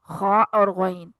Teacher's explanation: ख और गन इब्तदाए ह्क के हैं। ख गले की खराश के साथ गन दोनों हरूफ पुर हैं।